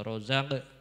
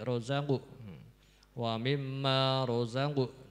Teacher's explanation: Nah, jadi ini ada qaf, qaf itu sifatnya tafhim ketika sukun, dan ketika kasroh juga harus dimoncongkan bibirnya sedikit